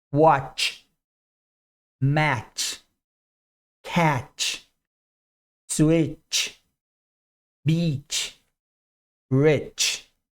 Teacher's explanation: na sequência tch o t não é pronunciado não participa do movimento